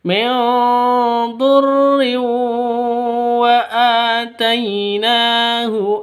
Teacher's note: Cara membacanya adalah dengan memasukkan wawu disertai dengan senandung dua ketukan. Karena wau ini termasuk dalam huruf-huruf idgham bighunah. · Nun mati bertemu dengan dad. Cara bacanya samar didengungkan, siap-siap ke huruf dad-nya. Kenapa? Karena bacaan ikhfa hakiki.